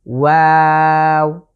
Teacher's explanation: ওয়াও উচ্চারণের ক্ষেত্রে আমাদেরকে 3 আলিফ টেনে পড়তে হবে।